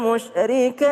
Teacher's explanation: kalau berhenti huruf ta itu ada desisnya sedikit tapi jangan terlalu banyak. Jangan wal musyrikat terlalu banyak jangan juga tidak ada wal musyrikat tapi ada tapi sedikit.